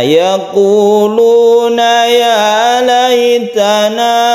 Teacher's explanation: kita berhenti sebagai mat tabi'i, artinya kita panjangnya satu alif saja